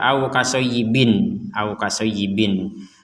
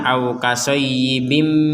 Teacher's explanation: tanwinnya kasratain ini dimasukkan dimasukkan kepada huruf mim